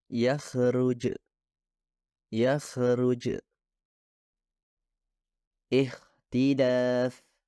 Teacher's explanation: Perbedaan kedua adalah suara kha, suara tanpa getaran, yang artinya dihasilkan dengan mendorong udara melalui celah yang terbentuk di antara keduanya, yaitu akar lidah dan langit-langit lunak. Untuk memahami apa yang saya maksud, coba sentuh tenggorokan Anda ketika mengucapkan suara kha.